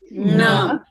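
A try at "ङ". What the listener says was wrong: Not na. Nga. Yeah, just, pay attention to the roof of the mouth and the tongue and make a nasal sound.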